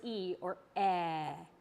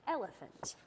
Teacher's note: your tongue is kind of towards the front of your mouth but your mouth is kind of about half way open